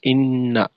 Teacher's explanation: নুনের জবর ছোট, ইন্না এরকম লম্বা হবে না